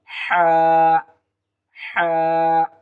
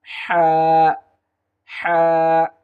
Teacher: হলকের মধ্যস্থান হইতে এই হা হরফটি উচ্চারিত হবে